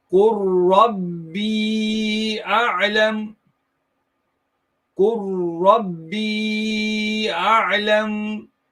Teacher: when you have ra coming off the lam sakin, yeah, then you merge that lam into the ra, and hence ra has a tashdid on it to indicate that there is idgham being done here.